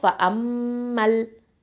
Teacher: இந்த ஃப அம்மா அப்படிங்கிறதுல வரக்கூடிய இந்த அலிஃப் மத்தையும் நம்ம உச்சரிக்க மாட்டோம். ரெண்டுமே வீழ்த்தப்பட்டுடும்.